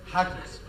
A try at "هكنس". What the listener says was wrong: حكنس ولا هكنس؟ لا هي هكنس، ايه رايك بقى؟